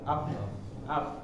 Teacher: Yang pertama, misalnya kita sukunkan di huruf fa, fahathahu syakhsun sakat, kita sukunkan huruf fa, af. Nah, ini adalah nafas mengalir, af, af. Nah, selanjutnya di huruf ha ya, hatibis. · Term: hamas